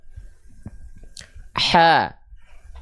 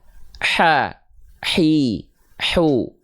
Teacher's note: karakteristik nafas yang mengalir dari huruf H kecil karakternya berbisik Jadi kalau teman-teman tepat melafalkan Ain eh maaf melafalkan H kecil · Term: hams